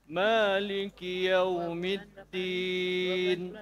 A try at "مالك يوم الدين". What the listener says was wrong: دين هذا ليست كسرة كمان. مالك يوم الدين هذه ليست كسرة صحيحة. مالك يوم الدين دين. إذن الكسرة الصحيحة إذا أشبعته إذا تولد الياء دي هو يتولد الياء.